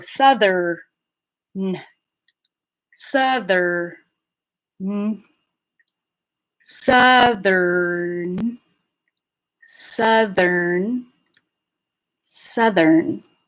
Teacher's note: So if you're saying southern and you want to say southern with an R, land on the R and then put the N into another syllable